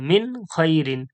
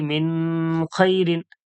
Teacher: নুন সাকিন বা তানবিনের পরে বা বামে কোন হরফ আছিলে ওই নুন সাকিন বা তানবিনকে গুন্না ছাড়া স্পষ্ট করিয়া পড়িতে হয় কোন রকম গুন্না হবে না কোন রকম নাকের মধ্যে আওয়াজ যাবে না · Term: ইজহার